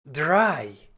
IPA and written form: dʁaɪ̯ (drei)